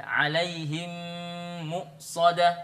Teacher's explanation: mim yang pertama dilebur dimasukkan ke dalam mim yang kedua lalu kemudian kita dengungkan, ya itu namanya idgham mim.